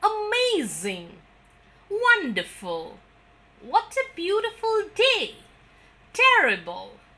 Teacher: These are exclamations when we normally use the falling tone, and in fact, the more you use the falling tone, the better your speech will sound in these.